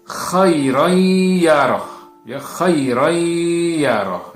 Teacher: bertemu dengan huruf huruf Idgham Bighunnah ini ya maka dia akan dimasukkan atau ditasydidkan ya kemudian dibaca dengan mendengung dan ditahan